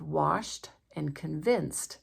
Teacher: Both washed and convinced have the T sound because they're voiceless right before the ED.